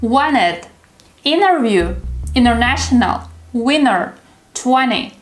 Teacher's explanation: When you have N and T in the word, the T disappears. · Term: drop the T